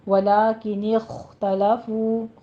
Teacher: خا پر ہمس کریں گے پر پڑھتے ہوئے ، فو میں واو مدہ ادا کیجیے، دونوں ہونٹوں کو گول